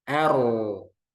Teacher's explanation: Jadi roknya tebal, A-nya tipis.